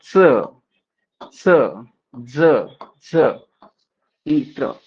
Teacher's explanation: स्पर्श के साथ साथ कुछ घर्षण के साथ निकलती है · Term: स्पर्श संघर्षी व्यंजन